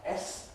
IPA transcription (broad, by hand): s